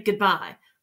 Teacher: Bye is where you hit your hardest syllable.